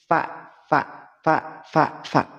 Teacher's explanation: dia keluar dari bibir bawah bertemu dengan ujung gigi seri atas